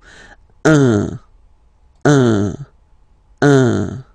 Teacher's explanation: So if you listen to me, you don't hear any N, okay? So it's just a combination of the two. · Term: nasal